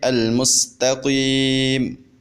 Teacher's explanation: ہم میم کی زبر کو وقف کے اندر ختم کر دیں گے